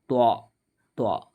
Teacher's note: നാവിൻ്റെ തലയും മേലെ മുൻപല്ലുകളുടെ മുരടും